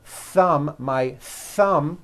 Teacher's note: a th sound where your tongue comes out between your teeth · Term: unvoiced th